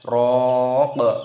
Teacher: Wa qila man raq, roknya di sini panjangkan, ada tanda alifnya mad tabi'i, panjangkan 2 ketukan, dan qafnya di sini ketika berhenti waqaf maka dimatikan, diqalqalah, dipantulkan suaranya